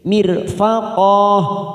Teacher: ro sukun yang didahului kasroh, maka kita baca tarqiq tipis